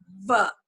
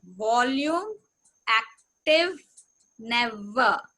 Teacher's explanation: it's a labiodental sound. That is your lower lip and the teeth. They should touch.